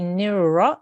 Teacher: you need to make your mouth round on the raw sound there